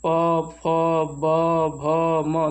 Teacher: दोनों ओंठों के मिलने से जब उच्चारण होता है ध्वनि का तो वो ओष्ठ व्यंजन होते हैं।